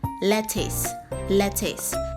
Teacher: there is no tus in the word. It is tis